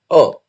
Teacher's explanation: यह अर्ध विवृत मध्य स्वर है, अर्ध भी है और विवृत भी है और मध्य के तौर पर आता है, मध्य भाग से।